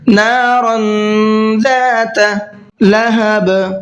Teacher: را کو پر کر کے بھی پڑھنا ہے، اخفا کر کے بھی پڑھنا ہے، اس لیے کہ تنوین کے بعد میں زال آ رہا ہے اور زال اخفا کے حرفوں میں سے ہے۔